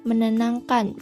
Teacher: konsonan T diluluhkan menjadi nasal, yang berarti menenangkan, bukan mentenangkan. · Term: peluluhan fonem